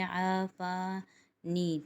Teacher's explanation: آفانی تینوں جگہ پر ایک ایک الف کی مقدار کھینچیں گے۔ آفا پہ الف مدہ بن رہا ہے، نی پہ یا مدہ بن رہا ہے۔